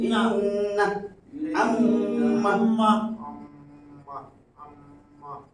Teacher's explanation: মিমে নুনে মিমে তাসদিদ হলে নাকের বাসি থেকে আমার গুনগুন আওয়াজে পড়তে হবে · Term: গুন্না